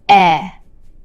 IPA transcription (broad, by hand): ɛ